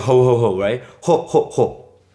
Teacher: In Spanish, it's just at the first sound of O, you stop there.